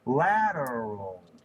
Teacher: The L at the end is actually rather different. In fact, the L at the end of lateral, the way we really say it, is actually pretty much a vowel.